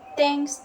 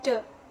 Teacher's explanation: produced by placing the tip of tongue between the teeth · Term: interdental